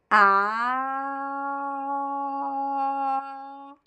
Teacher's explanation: it's a very open Sound it's the most open Sound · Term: open a sound